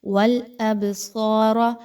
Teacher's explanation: با پر جزم کی علامت تو با کو تھوڑا سا ہلایا جا رہا ہے